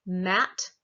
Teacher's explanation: the bilabial where i put my lips together